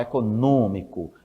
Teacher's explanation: Tá muda a pronúncia mas e muda o acento mas a a tonicidade ainda recai na antepenúltima sílaba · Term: proparoxítono